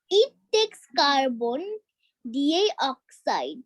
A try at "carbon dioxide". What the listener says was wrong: No, D বলবা না, it's carbon. It's carbon, C আছে, carbon dioxide. Carbon dioxide, yes.